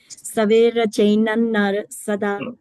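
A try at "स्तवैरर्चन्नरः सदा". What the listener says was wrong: It's very simple, right? Stavairar, one word. Chain. Stavairar. Chain. Naras. Sada.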